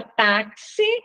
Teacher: x quando ele aparece com som de KS táxi né ó na palavra táxi o X tem som de KS · na palavra táxi, o X tem som de KS, então, uma letra só que representa dois sons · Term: dífono